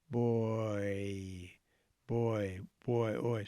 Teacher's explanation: slow down and you find yourself going from o to e